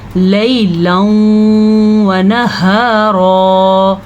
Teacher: रा को पुर पढ़ना है क्योंकि रा के ऊपर ज़बर आ रही है।